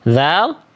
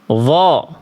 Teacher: Dha tipis, pangkal lidah kita tidak naik, tapi turun. Dho dia huruf yang tebal, maka pangkal lidahnya angkat.